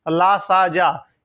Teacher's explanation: ला, सा, जा, ये कहां से बोले जाएंगे, दंत से बोले जाते हैं